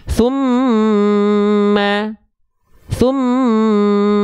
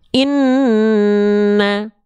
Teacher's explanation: dibacanya dengungkan dua harakat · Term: gunah